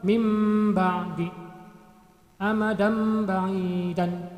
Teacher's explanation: nun mati atau tanwin cara membacanya itu dibalik menjadi mim mati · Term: iqlab